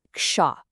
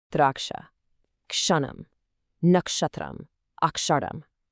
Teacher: Just like it says on the screen, you make this sound by mashing two others together. First, you start with a ka sound. Then you immediately add that hard sha sound, the one with the curled tongue. So ka plus sha smashes together to become ksha.